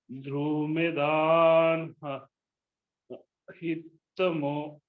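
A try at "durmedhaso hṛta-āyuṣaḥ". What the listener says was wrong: H is silent. Rishitayusha.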